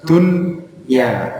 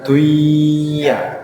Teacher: Jadi tidak idgham bi gunnah, tetapi menjadi idhar wajib. Di nunnya justru harus dibaca jelas dunya, bukan duya.